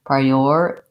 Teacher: we change that T to a flap so oftentimes when I T is between two vowel sounds in